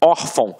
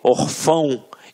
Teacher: reparem que a sílaba tônica está na penúltima sílaba. Por isso é uma paroxítona.